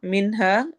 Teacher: नून पे इजहार करते हुए हा को लंबा करना है